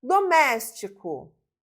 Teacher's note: a sílaba tônica está na antipenúltima posição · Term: proparoxítona